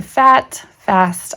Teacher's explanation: when I say fast that the a sound drops down just a tiny bit lower in my throat say fat fast I can actually physically feel it if I